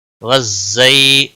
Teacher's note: زا کو تھوڑا سختی کے ساتھ ادا کریں گے، اس کے اوپر تشدید بھی ہے۔ زی یالین ہے، تھوڑا نرمی کے ساتھ کھینچ کر ادا کریں گے۔